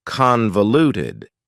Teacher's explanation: Convoluted also has 4 syllables, and the stress is on the first syllable.